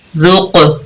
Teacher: جو حروف قلقلہ ہے اس کی آواز پلٹ کر واپس آ رہی ہے. ذال قاف پیش ذوق، دیکھیں آواز پلٹ کر واپس آ رہی ہے.